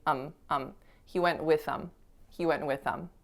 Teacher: instead of saying that th you can totally get rid of it and just say um um he went with them he went